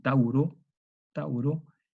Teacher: Tauro está unido a una vocal A, está unida a una A que le precede. Ese es un vau semivocálico. Bueno, este vau cuando está con la vocal A, ese monoptonga da origen a la vocal O.